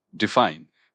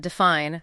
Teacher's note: it's pronounced define, with the emphasis on the second syllable